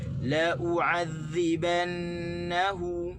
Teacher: Sebenarnya lam tu kita tak boleh tekan. Kita kena tekan di hamzah. Kita kena tekan di di la u'adzibanna, dinna dan di hu tu.